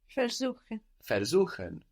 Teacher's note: Good, it's not on ver, because ver is not a word in its own right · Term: accent